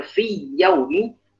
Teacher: ya pada lafaz yaum itu dia makhrajnya di wastul lisan, di tengah lisan. Maka makhraj ini sudah berbeda.